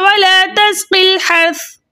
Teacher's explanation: रा साकिन से पहले जबर होने की वजह से सुरा को हम मोटा पढ़ेंगे।